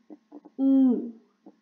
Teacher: My tongue moves, in back position, and it would be slightly high, and my lips would be rounded.